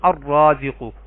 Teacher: اب آپ یہاں پہ دیکھیں التواب، یہ جو تا ہے یہ حروف شمسی میں سے ہے تو ال کا لام نہیں پڑھا گیا۔ الرازق، را حروف شمسی میں سے ہے تو ال کا لام نہیں پڑھا گیا